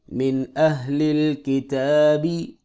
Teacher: نون ساکن ہے، یہاں پہ اخفا ہونا چاہیے لیکن نہیں ہوگا کیونکہ حروف حلقی میں سے آگے حمزہ آ رہا ہے، تا کو ایک الف برابر لمبا کریں گے۔